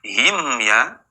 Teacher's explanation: jadi ketika bertemu him ya itu tidak boleh mendengung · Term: izhar syafawi, Izhar syafawi